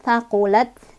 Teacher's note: Taknya ini punya sifat hamas, jadi ada udara keluar. Jadi huruf hamas ketika sukun lebih kelihatan ya, ada udaranya.